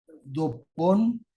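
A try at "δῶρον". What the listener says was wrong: La P, hermanos, es una R, ¿sí? Que viene siendo la ro. la B de Victoria viene siendo la nu y se pronuncia como N, dorón, to,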